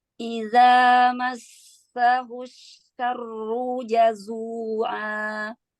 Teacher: sin bertasdid itu konsonan ganda ya Ustazah, ada 2 ya